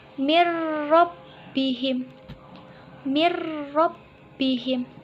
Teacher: cara bacanya yaitu dileburkan tanpa berdengung